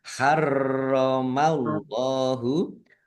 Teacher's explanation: Allahnya dibaca tebal karena harakat di depannya fathah. Lam fathah berdiri mad thobi'i panjang dua harakat. · Faqod dal sukun bacaan qalqalah dibaca memantul ditampakkan pantulannya. Faqod harromallahu rnya dibaca dobel ada tasdidnya.